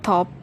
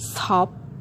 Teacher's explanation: in the word stop there is no puff of air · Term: unaspirated